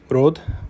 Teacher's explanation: She pronounces things like road as rod, which is, turning the ra of standard English into the alveolar tap